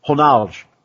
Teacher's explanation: in Brazil and in Portuguese, the R is pronounced almost like an H when it's at the start. And they also have a tendency to drop off the last syllable.